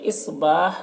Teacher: صاد کو پر پڑھیں گے اور یہاں پر الف مدہ ہے اور وقف کی صورت میں زیر سکون سے بدل جائے گا